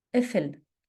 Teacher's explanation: قاف is pronounced as a glottal stop